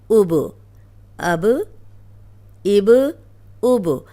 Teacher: جب بھی با پہ جزم آئے گی تو با کو ہلا کے پڑھا جائے گا